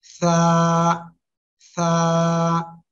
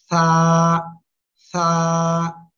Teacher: জিব্বার আগা সামনের উপরের এই দুই দাঁতের আগার সঙ্গে লাগাবেন লাগিয়ে হালকা বাতাস বের করে নরম সুরে আওয়াজটা উচ্চারণ করবেন